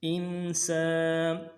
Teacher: ول حمزہ کو نون ساکن کے سامنے لانا ہے، نون ساکن میں غنہ کریں گے. ان سین کو باریک پڑھیں گے، سین سیٹی والا حرف باریک ہوگی اور سین کے ساتھ الف مدہ ہے، ایک مقدار میں کھینچیں گے.